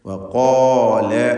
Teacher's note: വഖാല എന്ന് പറയുമ്പോൾ ഖാഫിനും അതിൻ്റെ ദീർഘാക്ഷരമായ അലിഫിനും തഫ്ഖീം കൊടുക്കണം. ഇസ്തിഅലാഇൻ്റെ ഹർഫായ ഖാഫിനെയാണ് ദീർഘിപ്പിക്കുന്നത്.